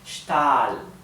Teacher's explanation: la A de Stahl, la pronuncio larga porque está seguida de una H y una L. Siempre que una vocal está seguida de una H y una L, se pronuncia larga.